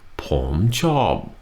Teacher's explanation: The tones are Palm job Rising falling